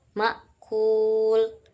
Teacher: terdapat mad thobi'i wau karena dibaca dua harakat